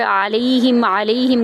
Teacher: علیہم کا عین وسط حلق سے ادا کریں گے